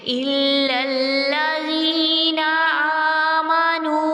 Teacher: واو مدہ کا، 2 کاؤنٹس تک اس کو ہم کھینچیں گے